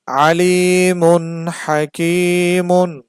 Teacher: হা হচ্ছে এই যে হা ইজহারের হরফ, তো এখানেও স্পষ্ট করে পড়তে হবে মিমটাকে, তানভিনটাকে স্পষ্ট করে পড়তে হবে